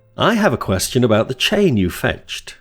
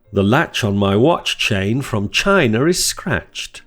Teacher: The ch sound is an unvoiced post-alveolar affricate made by blocking the airflow with the tip of the tongue behind the alveolar ridge, with the front of the tongue bunched up towards the palate. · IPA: / tʃ /